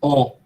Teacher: Você pronuncia, quando é um arredondado, você diz ó, a boca está bem redonda.